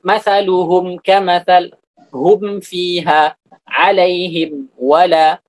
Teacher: Fatuzharul mimu biduni ghunnatin zaidah, maka mim itu diizharkan tanpa gunnah tambahan. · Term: izharu syafawi